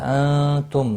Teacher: انتم، نون ساکن کے بعد حروف اخفا کا تا آیا، اخفا حقیقی ہوگا